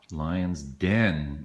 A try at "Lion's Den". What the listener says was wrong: Yeah, not dead. Den.